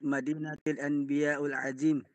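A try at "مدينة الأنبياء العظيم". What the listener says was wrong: Ulit. Kompletohin mo ng vowels. Walang sukon.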